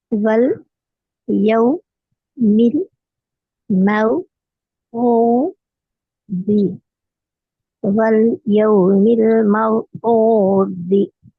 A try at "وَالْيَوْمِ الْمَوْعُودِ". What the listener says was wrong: ஐன் கொஞ்சம் வந்தா நல்லா. மவ்ஊதி, மற்றபடி மிச்சம் நல்லா. واليوم الموعود. அந்த ஊ. அது ஊ. எஸ், ஊ. நல்லா ஐன் எடுக்கணும்.